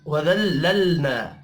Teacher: فهم لها مالکون وذللنا، لام ساکن پر قلقلہ نہیں کریں گے، نون کے اوپر کھڑی زبر ہے، ایک الف کے برابر کھینچ کر پڑھنا ہے ، ہا الف مدہ ہے، اس کو بھی ایک الف کے